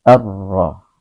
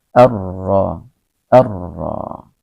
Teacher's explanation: Alif lam ini dibaca dengan cara sama seperti pada ayat 1 dan 2, yakni meleburkan alif lamnya ke dalam huruf syamsiyah yang di depannya. Jadi seolah-olah kita itu membuang alif lamnya karena kita langsung masukkan dengan huruf syamsiyah yang di depannya ini ra, ya. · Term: izhar syamsiyah